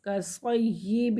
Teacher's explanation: یا کو واضح کر کے پڑھیں گے کیونکہ یا مشدد ہے